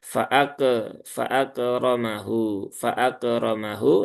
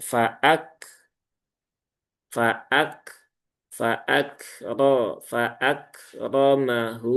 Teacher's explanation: Kemudian kafnya ini jangan sampai sifat hamsnya hilang apalagi yang muncul malah sifat qalqalah.